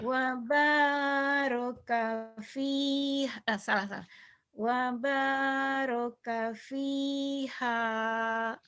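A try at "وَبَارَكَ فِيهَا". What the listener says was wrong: Cuman lagunya belum enak. Karena belum berani neken. Nah, tekannya nih tuh ya. Wa baraka fiha.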